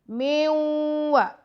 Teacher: میم کو ہم واو سے ملائیں گے، یہ جو نون ہے یہ نہیں پڑھا جائے گا. ٹھیک ہے، میو، یہاں ادغام اور مع الغنہ ہوگا.